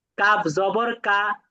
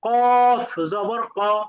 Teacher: পার্থক্য হল পাতলা হরফ উচ্চারণ করার সময় মুখটা স্বাভাবিক থাকবে। চেপটা অবস্থায় থাকবে। কিন্তু মোটা হরফ উচ্চারণ করার সময় মুখটা গোল হয়ে যাবে।